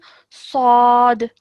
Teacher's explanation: we have to pronounce this with a thick and heavy sound, but with no element of a w sound. We don't add that in.